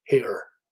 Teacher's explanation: the tongue blade raises to give a more canonical r token